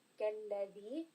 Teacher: So try not to have that zay sound, otherwise you can change the makhraj of the letter. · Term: dhal